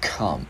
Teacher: Chữ K mình bật hơi vào come